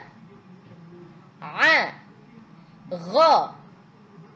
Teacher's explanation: dari tenggorokan a kemudian ha ha ha k a a gho terasa enggak tenggorokannya bergetar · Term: huruf halqi